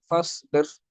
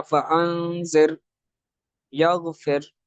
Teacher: وہ را جس پر سکون کے ساتھ وقف کیا گیا ہے تو اور اس سے پہلے کسرہ آ رہی ہے تو اب اس کو باریک پڑھیں گے. جیسے فصبر، را موقوفہ ہے، ساکن ہے، اس سے پہلے کسرہ ہے تو را کو باریک پڑھیں گے، فصبر. اس طرح فانذر، یغفر، تو را کو باریک پڑھیں گے.